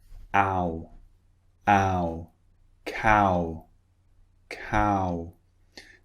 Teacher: So it starts quite wide and it finishes round.